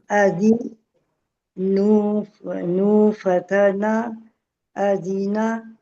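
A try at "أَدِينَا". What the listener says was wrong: शाबाश।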